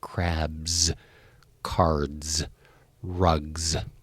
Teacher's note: the final sound is a Z sound, and this one is set off if the last consonant sound is a voiced sound